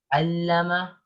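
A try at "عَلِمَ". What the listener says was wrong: No. Do you see shadda here? No, there is no shadda here. Alima.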